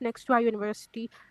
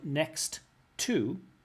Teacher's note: she doesn't pronounce the 2 T's, she pronounces it as 1 T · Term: connected speech